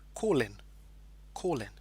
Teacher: next word begins with a vowel I so because of that there's kind of a linking sound okay it almost becomes like one word